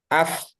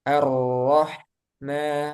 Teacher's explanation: jadi ketika kita membaca huruf Hamas ini dua pita suara kita terbuka